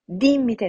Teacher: Multiple syllables, three syllables. The I, the penultimate I, is short, so we go to the antepenultimate for the accent.